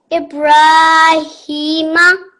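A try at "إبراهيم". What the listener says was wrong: I want to hear a bit of a more jumping sound. Ibrahima. Ibra, like that.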